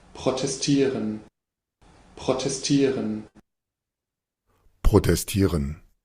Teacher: Nótese el uso de dos eres uvulares